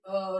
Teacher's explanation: अको विसर्जनीय नाम कंठा, यानी कि अ और आ का उच्चारण स्थान कंठ होगा